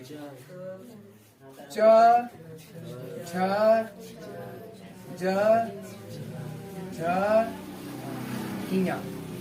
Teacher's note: च, छ, ज, झ, इया, ई, य और स, ये जो वर्ड होते हैं आपके तालु से बोले जाते हैं।